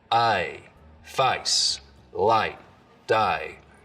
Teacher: up here you get some really dramatic face lowering for example so the diphthong in face starts real low down around ah · the diphthong in face starts real low, down around ah, I, face, light, day.